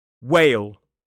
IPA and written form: weɪl (whale)